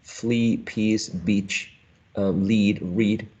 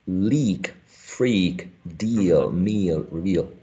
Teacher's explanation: Entonces, podría yo hacer la asociación de que tengo estas dos letras y las pronuncio como E, a long and tense E